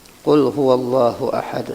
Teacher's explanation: Qul huwallahu Allahnya tuh tafkhim tebal